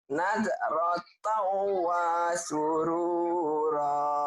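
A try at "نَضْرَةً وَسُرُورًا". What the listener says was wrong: tapi wanya pendek. Nadratau wa surura. Wanya pendek.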